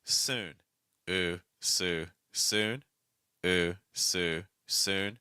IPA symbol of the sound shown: u